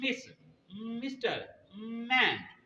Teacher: तो ये हमेशा आपने लिप्स को मिलाकर आवाज नाक से निकालनी है, वो एम की आवाज होगी।